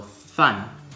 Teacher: fun is fourth tones so I like to tell people to say go down with their head